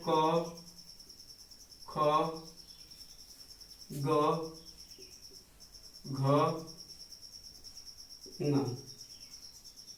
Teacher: पहला आ जाएगा इसमें क वर्ग। क वर्ग का उच्चारण कंठ से होता है।